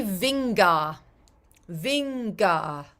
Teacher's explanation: You'll notice you're using the middle of your tongue and then you're releasing some air as you pronounce the G.